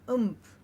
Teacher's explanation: Everybody, So here in this cluster, what we have to remember is the m, even though it's written, is not really being produced. It's being produced inadvertently because of the nasal and then the production of the p.